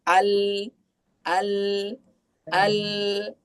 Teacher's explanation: Alif lam qamariah adalah lam yang dibaca jelas. Nah, jadi ketika ee bertemu dengan yang namanya alif lam qamariah, lamnya itu pasti terdengar jelas.